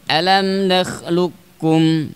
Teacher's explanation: hilang qafnya, yang tersisa adalah kaf dalam keadaan tasydid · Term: Idgham kamil